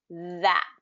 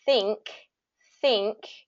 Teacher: so we have the voiced and the voiceless th